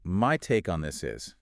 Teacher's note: >> The pronunciation trick here is all about stress. You want to stress the word my to emphasize that it is your personal perspective.